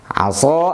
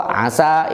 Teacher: Yang ini makhrajnya sama, tetapi sifatnya beda. Huruf shad dengan sin memiliki sifat yang beda. Yang satu isti'ala, yang lainnya istifal.